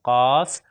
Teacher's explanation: زبان کی جڑ اور تالو کے نرم حصے سے، وہ سخت حصے سے تھا، یہاں پر نرم حصے سے ہے۔